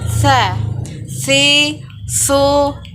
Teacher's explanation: dengan menyentuhkan ujung lidah kita dengan dinding dua gigi seri bagian atas, kemudian diucapkan dengan mengalirkan suara dan nafas kita dengan lembut. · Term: huruf sa